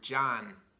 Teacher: nose you'll feel your nose vibrating for example the word John the end of the word John my tongue kind of comes right up here to close this off the air is coming out of the of my nose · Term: frontal nasal